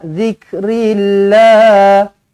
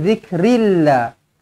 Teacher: lafzul jalalah baca nipis sebab huruf sebelumnya berbaris bawah